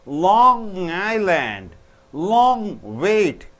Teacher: So when g and n combine ng. So air should come through your nose.